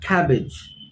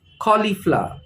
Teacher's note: the stress is on the first part of the word